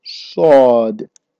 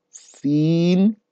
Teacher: And the Sad is thicker than the Seen.